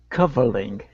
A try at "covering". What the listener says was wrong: Okay, give me a good R. Push your tongue down instead of covering. It's covering.